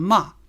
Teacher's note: fourth tone falling